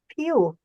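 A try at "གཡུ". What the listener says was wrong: No, not pew. The main sound is ya, right? Ya. If there is no prefix ka, then this will be just ya, shapku, you, right? Because there is a prefix, it went higher.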